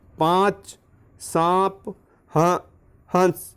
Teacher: इसमें आवाज़ नाक और मुख दोनों से बाहर आएगी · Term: चंद्रबिंदु